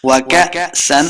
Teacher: حمزہ جو ہے اس کو جھٹکے کے ساتھ پڑھیں گے، حمزہ ساکن ہمیشہ جھٹکے کے ساتھ پڑھ جاتا ہے